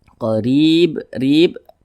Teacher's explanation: huruf ra yang memiliki tanda baca kasroh dibaca tipis, dibaca tarkik, sehingga pangkal lisan kita itu tidak terangkat ke atas ketika kita mengucapnya, ditipiskan.